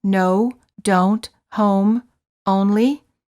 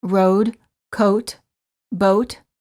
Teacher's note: the lips are very rounded and tense, and the tongue is a bit tense, and it moves from the mid-high to the high position.